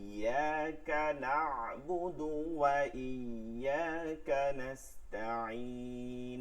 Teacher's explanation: বুদুতে টান দেওয়া যাবে না